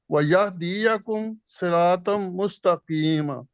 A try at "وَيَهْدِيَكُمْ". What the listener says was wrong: نہیں وَيَهْدِی نہیں کریں، وَيَهْدِیَکُم،